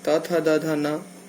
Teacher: त वर्ग के अंतर्गत दंत से जीभ का स्पर्श होता है